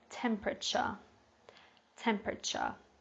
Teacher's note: this one can be a little bit difficult to pronounce because we've got the T-U-R-E at the end, but this is more of a ch sound